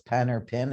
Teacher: in the south if it's pen or pin it's all the same